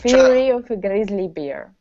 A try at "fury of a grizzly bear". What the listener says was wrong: Okay, now instead of grizzly, give me a good GR. Fury of a grizzly bear.